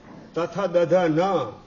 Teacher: દંતીય કહેવાય દાંત અને જીભનો સ્પર્શ થાય તો ઉત્પન્ન થાય